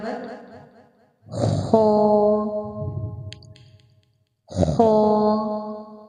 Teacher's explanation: جیم، حا، حا، حا کو ایک الف کے برابر، خو، خو، حلق سے ادا ہوگا، ہلکی سی رگڑ پیدا ہوگی